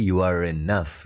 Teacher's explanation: ya closer tapi tadi e yang pertama You are enough itu r-nya Kok dibaca karena r-nya kan ketemu sama enough guys ketemu sama vokal